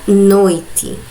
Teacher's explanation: Primeiro, ele vai estar apresentado com uma vogal e depois com uma semivogal, que no caso da palavra noite, o O e o I estão juntos dentro de uma mesma sílaba, mas o O, que é a vogal, está primeiro e depois a semivogal I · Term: ditongo decrescente